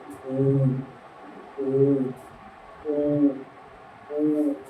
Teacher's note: जब ओ का उच्चारण करते हैं तो कंठ से ध्वनि निकलती है